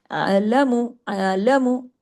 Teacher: عین آپ کو جما کے پڑھنا ہے، آپ کے گلے میں آنی چاہیے، رکنا نہیں چاہیے، نقصان حرف نہیں ہونا چاہیے.